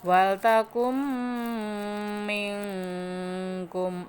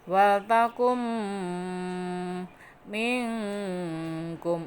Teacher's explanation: Nun sukun bertemu mim maka hukumnya idgham bi gunah, masuk dengan dengung.